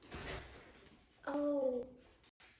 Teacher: What are your lips doing? They're moving forward.